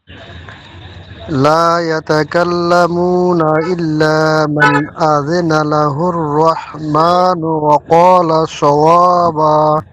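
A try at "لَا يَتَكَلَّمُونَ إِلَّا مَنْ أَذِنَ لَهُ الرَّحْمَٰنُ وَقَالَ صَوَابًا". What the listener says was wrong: মাশাআল্লাহ।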